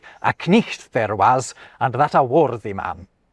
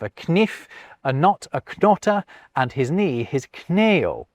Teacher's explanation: in Geoffrey Chaucer's day, the K was being proudly enunciated